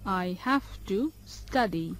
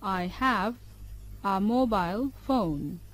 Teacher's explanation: যখন সত্য বা দখলে থাকা কোনো কিছুর বিষয়ে কথা বলা হয় তখন হ্যাভ ক্রিয়ার শেষ ধ্বনিটি ভি এর মতো উচ্চারিত হয়, তার মানে কোনো কিছুর বিষয়ে কথা বলা হলে। আর যখন কোনো কাজের বাধ্যবাধকতা বিষয়ে কথা বলা হয় তখন হ্যাভ টু ক্রিয়ার হ্যাভ এর শেষ ধ্বনিটি এফ এর মতো উচ্চারিত হয়